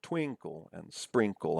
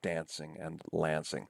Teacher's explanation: the rhyme doesn't come on the last syllable, right, but comes on the penultimate syllable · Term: feminine rhyme